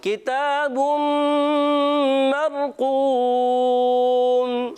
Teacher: एक अलिफ का गुन्ना करेंगे, रा साकिन है, रा साकिन से पहले ज़बर है तो क्या हो जाएगा, रा पुर हो जाएगा · काफ के नीचे ज़ेर है, काफ को बारीक रखना है, खींचना नहीं है